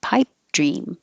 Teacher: You don't say the final P, your lips close, pipe, and then make the D.